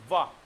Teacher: व यानी कि दांत और ओष्ठ को जोड़ना पड़ेगा, स्पर्श करना पड़ेगा, तब व का शुद्ध उच्चारण आएगा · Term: दंत्योष्ठ